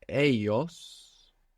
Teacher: Now the word for they is ellos, E-L-L-O-S. And this L-L in most Spanish dialects makes a Y sound